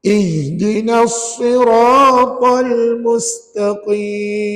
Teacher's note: dalam ayat ini ada beberapa huruf yang tebal yang pertama sad yang kedua Ra yang ketiga ta Yang keempat Kaf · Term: huruf tebal